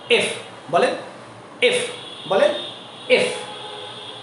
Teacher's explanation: এটাতে অনেকে বলে এফ এফ, নো, it will বি এফ। উপরের দাঁতের মাড়ি নিচের ঠোঁটের উপরে রেখে উচ্চারণটা করবেন।